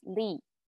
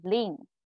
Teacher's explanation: you in singular form it's lee and then when it's nasalized so lean in plural forms